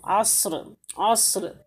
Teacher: موٹا حرف کے لیے کیا ہوگا کہ ہماری جو زبان ہے یہ جو پچھلا والا حصہ ہے زبان کا وہ اوپر کی طرف اٹھے گا